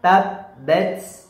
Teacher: Tekan di ta-nya, ujung lidahnya disentuhkan ke gusi.